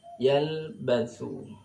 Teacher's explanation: lam ini punya sifat, sering kami jelaskan, punya sifat namanya tawassut, ma baina syiddah wal rikhwah. Yalbathu illa ini mad jaiz munfasil ketika diwasal.